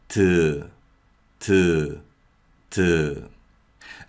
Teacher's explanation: Initial position is with the tip of the tongue just behind the upper front teeth. · 티귿 is a voiceless sound with mild aspiration, and this mild aspiration gives 티귿 a hint of T sound